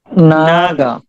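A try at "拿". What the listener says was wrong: নাগা বলতে হবে না, নাগা ফোর টোনে, টোনটা ফোর টোন।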